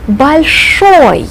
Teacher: Notice that the accent falls on the ending. Большой. I emphasize this syllable. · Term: accented masculine ending